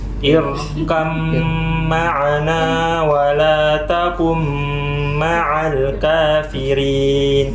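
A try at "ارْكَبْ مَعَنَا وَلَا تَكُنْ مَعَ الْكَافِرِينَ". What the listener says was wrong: Nah, nunnya mana? Nunnya mana? Nggak boleh, harus didengar.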